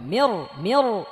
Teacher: নুন পড়ে যাবে, সরাসরি রকে ধরবে, মির মির। রের মধ্যে যেহেতু জবর, সো রটা মোটা করে পড়তে হবে, করে পড়তে হবে।